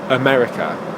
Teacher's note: it's got two schwa sounds in the word. /ə/ at the beginning and /ə/ at the end.